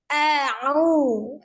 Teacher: Ya, kalau dilihat dari kuat atau lemahnya huruf hamzah termasuk huruf yang kuat secara makhraj, maka cara membacanya adalah dengan suara tertahan ya